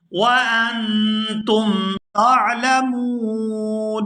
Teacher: یہاں حمزہ کو نون ساکن کے ساتھ ملائیں گے تو اخفا کریں گے